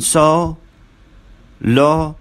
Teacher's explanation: The lips are apart. They are very slightly rounded. They are oval in shape. The tongue is slightly tense down near the floor of the mouth.